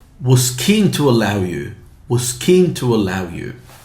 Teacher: the k is voiceless, so you say was keen